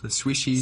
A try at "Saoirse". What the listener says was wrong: It's Saoirse with an R, not Sarcy with an R, cause Sarcy with an R goes or not R. It's sh instead of s, instead of e, simple as can be, see Saoirse.